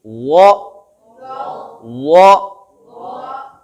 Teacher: ज़ुबान की नोक सामने ऊपर वाले दांतों के सिरों को लग रही है। ज़ुबान की जड़ ऊपर की तरफ जा रही है, तालू की तरफ